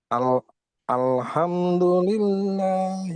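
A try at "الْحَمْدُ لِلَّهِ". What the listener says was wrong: Jangan jangan ha, ha, tenggorokan tengah. Alha, coba.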